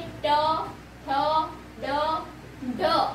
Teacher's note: कहाँ से होता है, इसका साउंड कहाँ से निकलता है, जो हमारा तालू और होठ के बीच में जो कठोर भाग होता है वहां से जो ध्वनि उत्पन्न होता है उसे हम बोलते हैं मूर्धन्य व्यंजन